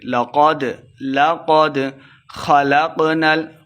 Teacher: قاف خا اور قاف دونوں کو موٹا کر کے پڑھیں گے۔